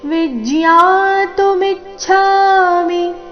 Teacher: ವಿ ಮತ್ತೆ ಮಿ ಮೇಲೆ ಆಘಾತ